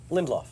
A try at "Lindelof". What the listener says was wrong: there's an L in the middle Lindelof